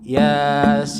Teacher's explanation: Coba lihat Quran, sin-nya yang lebih panjang bukan ya-nya. Ya-nya itu cuma 2 ketukan. Yasin, sin yang lebih panjang.